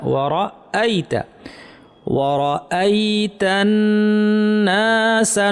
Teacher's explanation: আয়ের যে হামজাটা আছে শক্ত হবে, অনেকে নরম করে ওয়ারাইতা বলে ফেলেন।